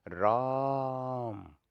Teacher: राम को कुछ ज़्यादा ही देर तक बोला जा रहा है, तो ये प्लुत हो जाता है। तो इसमें मात्रा का लगभग 3 गुना प्रयोग होता है।